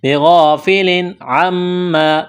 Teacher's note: تنوین کے بعد عین ہے، حروف حلقے ہے، یہاں پر غنہ نہیں کریں گے، اظہار کریں گے۔ بغافل عما، میم مشدد پر غنہ کریں گے۔